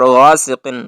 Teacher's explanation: غین اس کو پر پڑھنا ہے، موٹا حرف ہے، اس کو ہیوی اور سٹرانگ وائس کے ساتھ ادا کرنا ہے۔ اور سین ادا کرتے وقت سیٹی کی آواز آئے، اور قاف کو بھی پر پڑھنا ہے۔